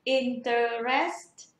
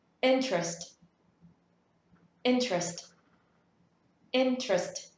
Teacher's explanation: Thế nhưng từ này không phải là một từ có ba âm tiết, mà từ này chỉ có hai âm tiết thôi.